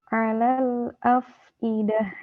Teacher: ada mengeluarkan udara. Huruf fa karena sifatnya hamas.